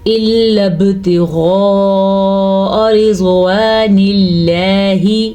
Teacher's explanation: پھر سے با پہ کلکلا ہو رہا ہے کیونکہ با پہ ساکن ہے. غین کو پر پڑھیں گے، ہونٹوں کو گول کریں، منہ کو گول کریں تو غین خود بخود موٹا ہو جائے گا.